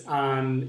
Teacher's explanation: it's like pronouncing an N, na, ne, but putting your tongue, sticking your tongue to the top, and it's a very nasal sound. Ña, ñe, ñi, ño, ñu.